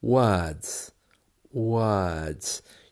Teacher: You can hear there that the letter R is almost gone.